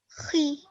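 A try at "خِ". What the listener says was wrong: Perfect. Well done.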